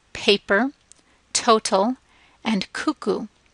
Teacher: in English there's that puff with those sounds with the the P and T and C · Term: puff of air